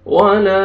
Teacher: ولا, الف مدہ, الف سے پہلے فتحہ, لام کو آپ نے کھینچنا ہے